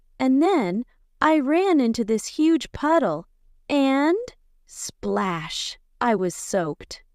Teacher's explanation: see how the excitement comes through with faster speech and a higher tone